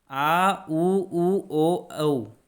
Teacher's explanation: तथा पश्च स्वर में जीभ पीछे की ओर चले जाती है।